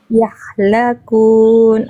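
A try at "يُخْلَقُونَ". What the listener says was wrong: Yukhlakun. Iya, tadi Bunda bilangnya wahum ya, harusnya wahum yukhlakun.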